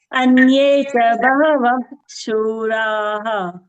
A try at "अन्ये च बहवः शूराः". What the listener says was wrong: Bahavash. Next, after Visarga, it is Shura. So Ish sound should be heard properly. So we are not hearing that Ish sound, right? Anye cha Bahavash Shuraha.